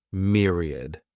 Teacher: This word has 3 syllables, and the stress is on that first syllable, mere. Sounds like mere, myriad.